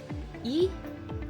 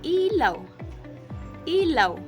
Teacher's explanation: ang dila ay mataas sa harap at ang labi nakangiti at tunog matinis at malinaw.